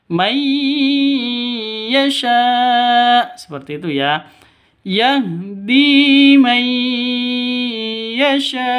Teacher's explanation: Yahdi may yasha. Sya panjang 5 ketukan karena ada layar bertemu dengan hamzah di satu kata berarti mad wajib muttasil